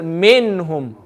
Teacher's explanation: Remember, this is the key thing to look out for, the throat letter. Here we have a throat letter, so we're going to read the Noon nice and clearly